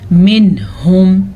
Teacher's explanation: منہم، یہاں پہ رکنا نہیں ہے، اظہار کا قاعدہ ہو رہا ہے، نون کے بعد حروف حلقی میں سے ہا آیا ہوا ہے